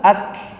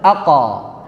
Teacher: Kalau qaf memantul itu pasti bergetar pita suaranya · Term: qalqalah